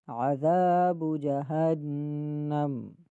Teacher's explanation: بِرَبِّهِمْ کَفَرُوا بِرَبِّهِمْ عَذَابُ جَہَنَّمَ، عذا میں عین گلے کے درمیان سے ادا ہوگا، عذابو کو با جو ہے اس کو نہیں کھینچنا، اور ذال کو ایک الف کی مقدار کھینچیں گے۔ عذاب جہنم، جہنم لفظ کے اندر جو ہا ہے اس میں کبھی کبھی ہا پڑھ دیا جاتا ہے، اس غلطی سے بھی بچنا ہے۔